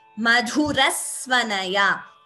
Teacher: So the second S is heard before Sva. It is not Madhurasvanaya. · That S is heard, though it's not written here. Extra S is heard before the Sa, before Sva. That is Dvitvam.